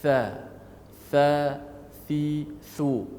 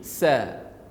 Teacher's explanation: Bunyi anginnya lebih lembut dan tidak sekuat sin. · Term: huruf tha